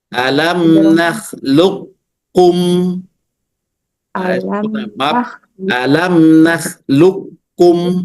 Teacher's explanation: Idgham kamil artinya mengidghamkan huruf qf kepada huruf kaf secara sempurna